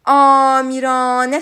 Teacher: Amiranə sözündə də a saitləri uzun tələffüz olunur.